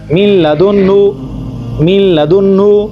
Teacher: آگے دیکھیں نون کے بعد لام آ رہا ہے، ہم یہاں پر غنہ نہیں کریں گے بلکہ ہم نون اور لام کو آپس میں ان کی آواز اکٹھی کر لیں گے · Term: ادغام